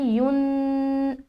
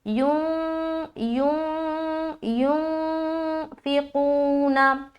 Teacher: नाक में नून की आवाज़ का छुपाना इख्फा कहलाती है। जब हम इख्फा करते हैं तो आवाज़ मखरज से हटकर होती है, यानी कि मखरज को नहीं लगेगी। · तो गुन्ना मखरज को जब लगती है आवाज़ तो गुन्ना होता है, मखरज से जब हटकर आवाज़ होती है तो इख्फा होता है। तो इख्फा में आवाज़ ज़बान जो है मखरज को नहीं लगेगी, उससे हटकर होगी तो सही से इख्फा अदा होगा